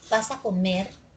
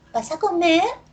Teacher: si yo te pregunto vas a comer esto tiene entonación ascendente